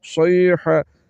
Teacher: جائے گا جس کا مخرج حلق کے نیچے والا حصہ ہے تو حلق کے درمیان والے حصے سے اواز کو نکالتے ہوئے اس حا کو پڑھیں گے